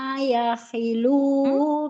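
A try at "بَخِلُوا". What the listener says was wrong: Ibu, titiknya satu ya, bukan yakhilu, bakhilu.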